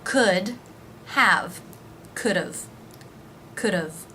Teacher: consonant so rather than just adding a v sound it actually adds another unaccented syllable the schwa sound followed by the v sound